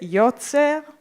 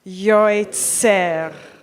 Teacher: So when we look, I look at the word yotzer, yoitzer. So in the Ashkenazic pronunciation, we wouldn't just read it yotzer, it would be yoitzer